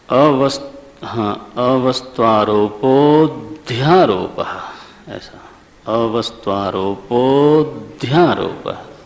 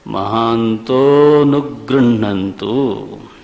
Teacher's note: तो अवग्रह जब भी हो तो थोड़ा ओ को दीर्घ कर दो, लेकिन अ का उच्चारण नहीं होना चाहिए।